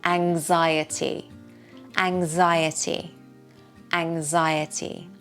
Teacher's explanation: The X sounds like a ngs.